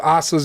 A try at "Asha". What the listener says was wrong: You gotta, the H is silent.